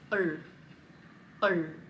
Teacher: This is a retroflex L. Retroflex again means your tongue is in the back and it's going to touch the roof